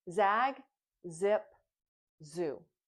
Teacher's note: Your tongue is right on the top behind your top teeth, and the sound goes on and on. And remember, it's a voice sound. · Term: Z sound